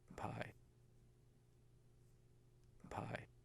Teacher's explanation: You can see the same silence where the lips are closed and the same big waveform for the vowel I, but before the vowel, there's this noisy burst of turbulence. That's the aspiration on the P.